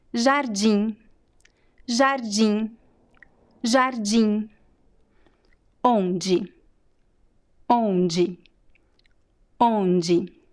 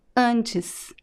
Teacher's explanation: have you noticed that I do not pronounce the N and the M sound? They are there just to make the vowel nasal. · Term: nasal vowels